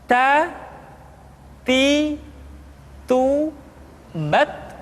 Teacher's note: Keluar dengan menyentuhkan ujung lidah kita dengan gusi-gusi gigi seri bagian atas. Ta. Kemudian huruf Ta ketika diucapkan terdengar ada nafas yang mengalir, atau dalam ilmu tajwid disebut dengan sifat al-hamas.